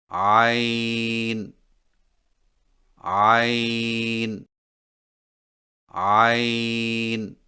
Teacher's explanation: عین کی ادائیگی میں زبان کی جڑ کو حلق کی طرف مضبوطی سے دباتے ہوئے باریک اور رگڑ کھاتی آواز میں پڑھیں